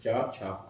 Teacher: इन वर्णों के उच्चारण में नाद की जगह केवल श्वास का प्रयोग होता है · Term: अघोष